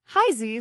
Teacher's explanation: The pronunciation, Haizi, flows with a rising tone followed by a neutral tone, like a child's voice calling out to their parents.